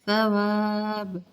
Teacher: ثا کو نرم پڑھیں گے، سا نہیں پڑھیں گے